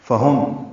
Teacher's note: فہم، ہاں اقصی حلق سے نکالیں گے جہاں بھی ہوگا، اور میم ساکن پہ اظہار شفوی ہے